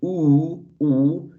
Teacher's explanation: when you're producing oo, your lips are also tense, but not as if when you're producing e, that they are spread. They are rounded and protruded. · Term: protruding lips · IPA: uː